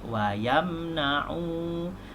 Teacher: Wa yamna'u, dibaca 2 harakat, disebut dengan mad asli · Wayam dibaca jelas, mim mati bertemu dengan nun. Izhar syafawi, bacaan jelas.